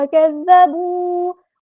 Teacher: زال مشدد ہے تو اس کو دو بار ادا کریں گے ، ایک بار ساکن کر کے، ایک بار سکون حرکت کے